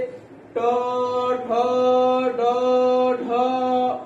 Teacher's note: जिह्वा जो है वह मूर्धा को स्पर्श करके ट वर्ग का उच्चारण करती है · जिह्वा और पीछे जो मूर्धा होता है उसको स्पर्श कर रही है